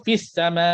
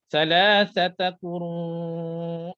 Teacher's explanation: Jadi 6 harakat ketika mana waqaf. Waqaf 6 harakat. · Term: mad wajib muttasil